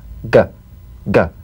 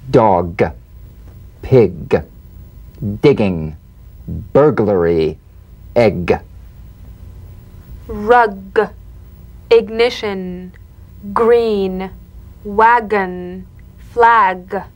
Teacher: the back of the mouth without tightening pressing or pushing gah you'll feel a crisp tap and a voiced pulsation of the back of the tongue · the voiced tongue back plosive consonant G. Place the back of the tongue in gentle contact with the soft palate. Let the tongue spring away. Play this drumbeat on the springing action of the back of the mouth without tightening, pressing, or pushing.